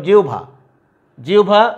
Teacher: যে শব্দগুলোতে আগে ই ধ্বনি থাকবে সেখানে বটা হয়ে যাবে ভ যথারীতি, কিন্তু এই হটা আবার হয়ে যাবে উকারান্ত ধ্বনি